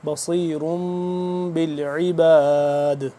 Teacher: دال کیونکہ ساکن ہو رہا ہے نا، یہاں پہ قلقلہ بھی کریں گے